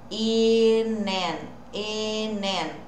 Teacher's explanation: Lembrando que esse I não é tão I e sim um E.